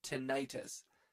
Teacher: tinnitus, stressing the second syllable, often used by the public